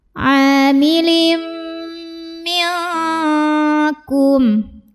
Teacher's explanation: Karena ada tanwin kasrah yang bertemu dengan huruf mim. Maka tanwin kasrah ini lebur atau masukkan ke mim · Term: idgham bi gunnah